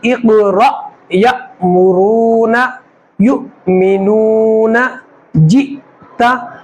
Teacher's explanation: अगर जज़म हमज़ा के ऊपर आएगा तो वहाँ पर झटका मार कर पढ़ेंगे